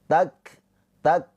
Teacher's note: Kaf sukun mempunyai sifat hames. Ada aliran nafas. Tak tak tuh ya tertahan dulu. · Ada aliran nafas. Tak tak tuh ya tertahan dulu. Tak baru keluar aliran nafasnya. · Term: sifat hamas